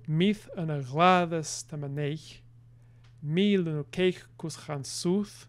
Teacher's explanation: each line has 3 feet, which are right-headed